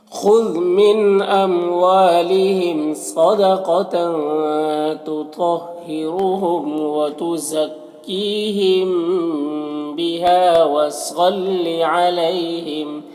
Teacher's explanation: یہاں پر الف مدہ ہے، ایک الف کے برابر کھینچیں گے۔ یہاں پر صاد حروف مستعلیہ میں سے پر پڑھیں گے۔ یہاں پر یا ساکن سے پہلے لام کے اوپر زبر ہے تو یا لین ہوگا، اسے نرم آواز کے ساتھ جلد پڑھیں گے اس طرح سے۔ · میم ساکن کے بعد با ہے تو اخفاء شفوی ہوگا، اسے غنہ اور اخفاء کے ساتھ میں پڑھیں گے